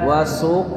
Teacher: tebalkan qnya wasqa mantulnya jangan ditahan